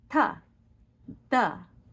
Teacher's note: for Latin we're going to bring our tongue forward onto our teeth which is called dentalized D's